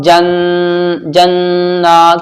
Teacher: جب نون کے اوپر تشدید ہوتی ہے تو غنہ ہوتا ہے، ناک میں تھوڑی دیر آواز یہاں بھی رکے گی